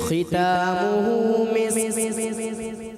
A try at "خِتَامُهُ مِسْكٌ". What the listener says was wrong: کاف کی ادائیگی کلیئر کریں.